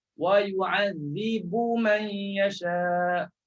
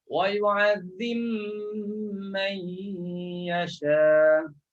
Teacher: Masukkan ba dalam mim. Jangan sebut lagi lah huruf ba. Terus sebut huruf mim. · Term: idghamkan ba ke dalam mim